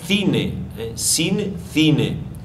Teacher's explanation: de I será c si tod ahí tenemos un caso exemplar el interdental sordo dominante en varios lugares o regiones de habla español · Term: fricativo interdental sordo